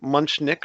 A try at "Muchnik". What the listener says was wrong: Muchnik. Everyone wants to insert an N in there. It's Muchnik.